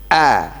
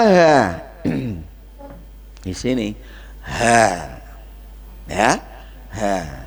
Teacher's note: tenggorokan yang bagian bawah itu tempat keluarnya huruf hamzah dan ha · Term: tenggorokan bagian bawah